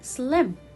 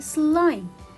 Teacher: just like this word slim but when i have letter e it will be silent letter and at the same time it affects the pronunciation of the word so it makes the vowel longer